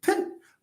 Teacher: Like when I say pen, and then when I open, the air bursts out. It's like an explosion. That's why we call it plosive.